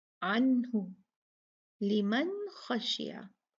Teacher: हम इजहार करते हैं नून का, और वो न उतना ही पढ़ते हैं जितनी ज़रूरत है, जितनी उसकी तबीयत में है।